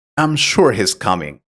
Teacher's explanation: your voice tends to fall at the end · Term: intonation